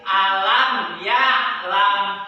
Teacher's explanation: Ya, jelas ya, langsung lam ya'lam tanpa didengungin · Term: izhar syafawi